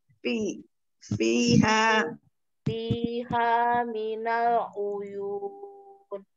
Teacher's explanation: Gigi seri atas menempel di bibir yang basah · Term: makhraj fa